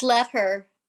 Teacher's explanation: those two consonants that come together just get smushed in together and into like one it sounds like one word here's another one um pam since